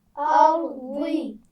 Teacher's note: ایک تو را کو موٹا پڑھنا ہے اور ضاد کی آواز بھی موٹی ہوتی ہے